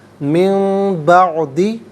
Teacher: میم سے چینج کر کے میم کی آواز کو غنّے کے ساتھ ادا کرتے ہیں۔ من بعدی نہیں، من بعدی، میم کی آواز غنّے کے ساتھ ادا ہوگی۔